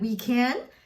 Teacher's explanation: he said we can and that's a question mark that's why it's a rising intonation